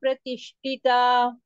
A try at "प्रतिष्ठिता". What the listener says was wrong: महाप्राण no no no not विसर्ग हिता थ महाप्राण नॉट टी ही नॉट टीता हिता प्रतिष्ठिता